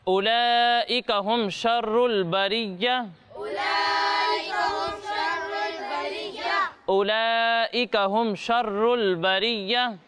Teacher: یہاں پر مد متصل ہو رہا ہے تو اسے کتنا کھینچیں گے؟ 2 یا 2.5 الف تک کھینچ کر پڑھیں گے